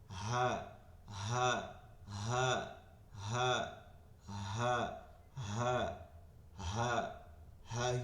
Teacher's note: হামজার উচ্চারণ হা, হা, হা, এই বুকটা ভাইব্রেশন হবে, হ্যাঁ হ্যাঁ, কোনো বাতাস আসবে না, লম্বা হাতে যেমন বাতাস আসে এরকম হবে না · এটা গম্ভীর আওয়াজ হয় হামজার মাখরাজ থেকে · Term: গোল হা